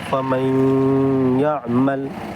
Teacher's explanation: This is idgham letter. So we will merge noon sakin into ya, and the sound of noon sakin will not be clearly pronounced